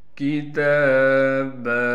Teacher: کتاب، کاف کو باریک پڑھنا ہے، تا پر کڑا زبر ہونے کی وجہ سے تا کو ایک الف کی مقدار کھینچیں گے۔